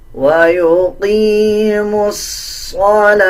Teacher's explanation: کو، یعنی ان چاروں حروفوں کو سکپ کر دیا جائے گا، میم کو ڈائریکٹ صوت کے ساتھ ملا کے پڑھا جائے گا